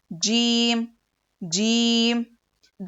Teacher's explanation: यह जो जुबान है हमारी तो जुबान के बीच का हिस्सा ऊपर के टालू में लगाने से जीम अदा होता है · जुबान के बीच का हिस्सा को ऊपर के तालू में लगाने से जीम अदा होता है। देखिए तस्वीर में, जुबान के बीच का हिस्सा, ये जो जबान है हमारी, तो जुबान के बीच का हिस्सा ऊपर के तालू में लगाने से जीम अदा होता है।